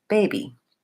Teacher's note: the stress is on the first syllable and the second syllable is short and reduced